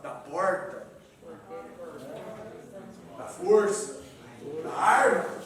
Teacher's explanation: é o Brasil do R retroflex